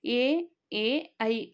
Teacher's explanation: ಕಂಠ ಮತ್ತು ದವಡೆಯ ಸಹಾಯದಿಂದ ಉಚ್ಚರಿಸುವಂತಹ ಅಕ್ಷರಗಳು ಎ ಐ ಅಕ್ಷರಗಳು ಹುಟ್ಟಲು ಕಂಠ ಮತ್ತು ತಾಲು ಇವೆರಡರ ಸಹಾಯ ಬೇಕಾಗಿರುವುದರಿಂದ ಇವು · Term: ಕಂಠ ತಾಲು